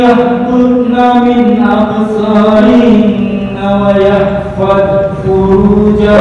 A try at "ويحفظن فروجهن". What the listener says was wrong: Wayahfazna pendek kelewatan.